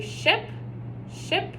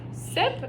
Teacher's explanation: you're going to feel your tongue go back so slightly and you're going to round your lips